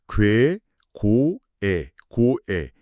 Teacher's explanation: 입술이 동그랗게 모였다가 양옆으로 찢어지네요. · 오와 이가 결합된 이중모음이거든요